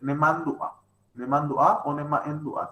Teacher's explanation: Porque pide que al ser la raíz nasal, se nasalice lo más que se pueda